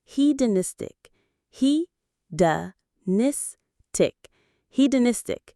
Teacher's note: The main stress is on that third syllable, nis.